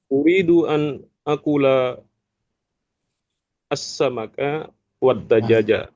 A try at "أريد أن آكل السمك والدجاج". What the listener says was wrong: Saya uridu an panjang an akula karena ada hamzah.